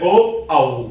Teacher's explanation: जिनका उच्चारण कंठ तथा होठों से होता है, उन्हें कंठोष्ठ्य वर्ण कहते हैं, जिसमें ओ, औ होते हैं।